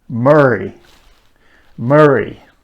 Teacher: the consonant sound is produced with the tip of the tongue pointing backwards